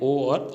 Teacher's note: कंठ और होठ, जिनका उच्चारण कंठ और होठ से होता है, वो है ओ और औ स्वर। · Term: कंठोष्ठीय